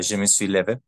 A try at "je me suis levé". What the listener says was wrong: Oui, exactement, exactement.